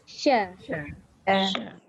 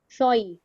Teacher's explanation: Dia tak perlu muncung sebenarnya sebab shin itu bukannya duduk dekat bibir.